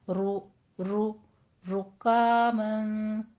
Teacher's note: رو بھی مفخم ہے، اور رو پہ ہونٹ گول کیجیے